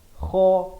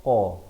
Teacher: kha di hujung kerongkong, qaf di pangkal lidah